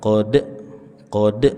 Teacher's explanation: Qalqalah kecil. Qod jangan dihentak.